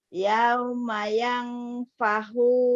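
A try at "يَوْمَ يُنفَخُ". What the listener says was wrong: Yauma yung fahu, bukan yang pahu. Yung pahu ya. Yung.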